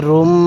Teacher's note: র লাগবে এই মিমের সাথে রুম, নাকের বাসি দ্বারা গুন্নাহ করব।